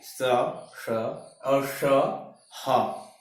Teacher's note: ऊष्म व्यंजन या संघर्षी व्यंजन, जो संघर्ष करके, रगड़ करके, घर्षण करके निकलती है